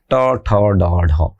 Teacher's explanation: যে ধ্বনি উচ্চারণে মূর্ধাকে স্পর্শ করে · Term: মূর্ধ বর্ণ